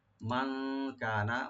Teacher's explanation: মান নুন সাকিন এখানে ইখফা করব আমরা, লাইট গুন্না। কানা কাব একালে টানবেন ওপেন করে, নুনে টান নাই।